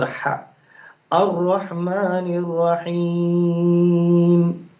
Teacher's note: را کے اوپر زبر ہے، اس کی وجہ سے اسے موٹا پڑھا جائے گا